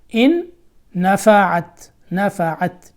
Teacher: نفعت جب اس کو ملائیں گے تو غنہ بھی ہوگا، اور جو دو نونیں ہیں، نون نون میں ادغام ہو جائے گا، تو ایک نون پڑھا جائے گا جو دوسرا نون ہے